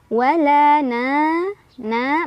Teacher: karena ada Alif sebelumnya ada fathah dibaca panjang dua harakat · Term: Mad Thobi'i